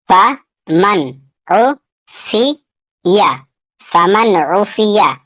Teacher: یہاں نون ساکن کا اظہار ہوگا کیونکہ نون ساکن کے بعد یہاں عین ہے اور عین حروف حلقی میں سے ہے.